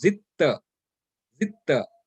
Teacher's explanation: we will pronounce this as this dal is dropped, and we pronounce it as zitta